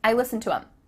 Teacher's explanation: The word them has the TH cut out, and instead you're saying I listen to them.